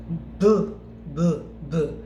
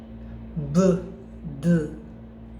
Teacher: you can feel vibration here at your Adam's apple or the vocal cord per se. All right, b, d, vibration is there much. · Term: voiced sounds